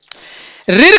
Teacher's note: ऋर का उच्चारण मूर्धा से होता है।